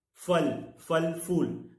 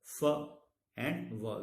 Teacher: In English we have the f as labiodental. The lower lip touches the upper teeth and the sound becomes f and not p.